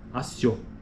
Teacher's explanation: Por isso que é um ditongo crescente, porque o pico da sílaba ocorre neste O.